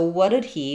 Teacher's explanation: when I have a little word like he, him, or her, in certain contexts, sometimes that H drops